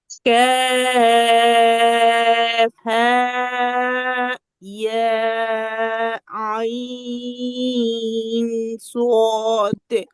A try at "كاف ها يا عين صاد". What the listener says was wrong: আচ্ছা, সুন্দর হয়েছে, কিন্তু হায়ের মধ্যে টান বেশি হয়ে গেছে। হ্যাঁ ইয়া আইন صاد।